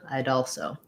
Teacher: there so it kind of sounds like i doll [Applause] so i'd also main stress on the all i'd also like to link those words as well um we · we tend to just link that D and the A there